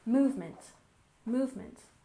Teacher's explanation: And movement, we stress the first syllable, movement, movement.